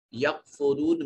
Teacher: واو ساکن ہے، واو کا ما قبل مضموم ہے، واو مدہ، اس کو ایک الف کے برابر لمبا کریں گے